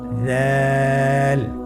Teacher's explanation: উচ্চারণ করার সময় অবশ্যই 3 আলিফ টেনে পড়তে হবে। দালের মাখরাজ হলো জিহ্বার আগা সামনের উপরের 2 দাঁতের আগার সঙ্গে লাগিয়ে উচ্চারিত হয়।